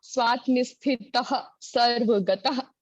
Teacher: हाँ, एक बात, ये जो विसर्ग लगी हुई है ना, स्वात्मस्थितः सर्वगतः, तो विसर्ग का उच्चारण ह होता है, ह। तो गतः, तो कंठ से वो विसर्ग का उच्चारण कंठ से होता है, स्वात्मस्थितः सर्वगतः, ठीक है।